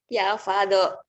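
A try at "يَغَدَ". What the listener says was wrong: Ya go. Itu go. Ya godo. Bukan ya pado. Itu go. Kalau fa itu bulat ya. Ini kan segitiga.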